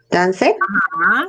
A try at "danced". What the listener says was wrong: Con el final, dance.